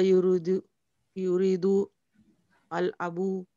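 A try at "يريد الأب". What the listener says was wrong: When we have word before alif, alif becomes silent. So you say yuridul abu.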